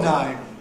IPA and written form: nʌɪm (name)